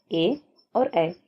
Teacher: अगला है कंठ तालव्य वर्ण। वे वर्ण जिनका उच्चारण कंठ और तालु दोनों की मदद से किया जाता है। उन्हें कंठ तालव्य वर्ण कहते हैं।